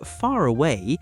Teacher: We don't always pronounce the R strongly. Instead, we often link it to the next word. So far away sounds like far away. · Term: non-rhotic accent